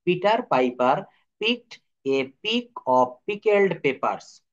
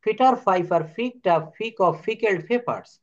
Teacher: কারণ আমি পড়েছি এখানে, দেখেন আমার যে জায়গায় পি থাকবে সেখানে আমাকে ফ বলতে হবে, সেখানে আমাকে কি বলতে হবে, আমার রুল আমাকে শেখাচ্ছে ফ বলতে হবে। তো এখানে এই সেন্টেন্সে যত জায়গায় পি শব্দটি রয়েছে, আমরা সেখানে ফ উচ্চারণ করব। আমরা প বলবো না, ফ বলবো।